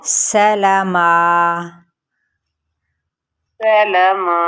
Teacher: نون سے یعنی ناک سے آواز نہ نکلے آپ کی، نیزل ساؤنڈ بالکل نہیں آنی چاہیے